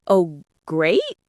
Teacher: And if I say, "Oh, great," with a questioning rise at the end, I sound uncertain